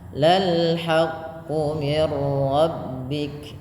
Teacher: di sini ada nun sukun bertemu ro yaitu idgham bila gunah. Maka dimasukkan bunyi nunnya kepada huruf ro.